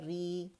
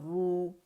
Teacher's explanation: اور کسرہ کے ساتھ یہ باریک پڑھا جائے گا، اور ضمہ اور فتح کے ساتھ یہ موٹا ہی پڑھا جائے گا۔ رو فتح الف صغیرہ رو، رو کسرہ یا صغیرہ ری، یا اس کو اگر پڑھیں گے دوسری طریقے رو، رو کیونکہ نام ہے میں نے کہا موٹا پڑھا جائے گا تو اس کو ہم رو ہی پڑھیں گے، ٹھیک ہے؟